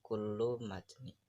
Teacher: Ada jeda di antara kata kullu dan juga matni.